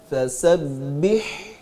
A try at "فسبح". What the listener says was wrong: اس کو فسبح بہ با کو مجہول نہیں پڑھیں گے، بے یہ نہیں بی.